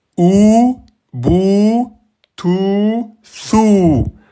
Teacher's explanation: Le W prolonge la damma. Elle le prolonge en deux temps, pas plus hein. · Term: voyelle longue